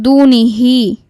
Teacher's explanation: মাদের হরফের উপর চিকন চিহ্ন এবং বামে হামজা মাদ মুনফাসিল আমরা তিন আলিফটান দিয়ে পড়ব